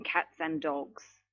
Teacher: It's not natural to be saying and dogs because you've got two Ds there. And also we're going to weaken this.